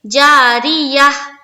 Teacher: जब हाय साकिना बना देंगे और हम वक्फ करेंगे तो यहाँ पर हा समझ में आनी चाहिए, यानी कि हा जो हर्फ है वो पूरी वाज़े तौर पर समझ में आनी चाहिए कि ये हा है।